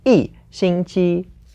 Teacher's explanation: because 星期 is first tone, we have to change the 一 to the fourth tone. So it becomes 一星期.